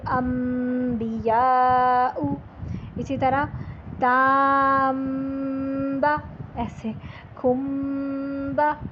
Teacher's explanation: اس میں غنہ ایڈ کرنا ہے، دو حرکت کا غنہ اس میں آپ کر کے جائیں گے